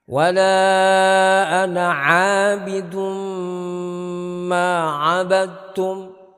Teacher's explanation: Begitu juga di sini ada bacaan idgham bi gunnah, yaitu tanwin ketemu mim, maka sama yang 6 itu kita dengungkan, kemudian kita tahan selama 2 harokat atau 3 harokat